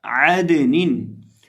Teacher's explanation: عین کی ادائیگی درست طریقے سے کریں گے، عین حلق کے درمیان سے ادا ہوگا، اس کی آواز آئے گی عدنین۔